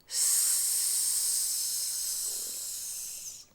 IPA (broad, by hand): s